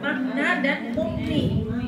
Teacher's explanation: Mem sukun bertemu dengan nun itu memnya jelas. Bacanya jelas ya, idhar ya. Tapi dia tidak terjeda